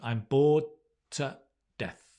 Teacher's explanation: notice how that the d and the t is the same sound